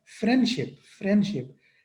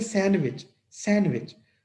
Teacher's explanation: लेकिन एक्चुअली तेजी से बोला जाएगा तो ये बन जाएगा फ्रेंडशिप, फ्रेंडशिप। डा साउंड जो है वो खत्म हो जाएगी, प्रोनाउंस ही नहीं होगी।